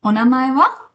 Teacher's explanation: we created simple, obvious questions by marking the topic with wa in a rising tone